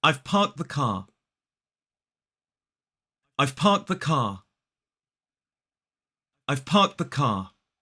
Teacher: we don't pronounce the R in parked or in car in this sentence, and also the has that schwa in it, so it's the. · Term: modern British RP accent